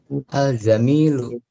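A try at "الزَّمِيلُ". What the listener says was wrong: Zamil laisa jamil. Zai laisa jim, ya, ini huruf zai dan bukan huruf jim, ya.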